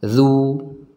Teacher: zal ini diucapkan dari ujung lidah kita tempelkan ke ujung gigi seri yang atas, ya. Lidahnya dikeluarkan sedikit.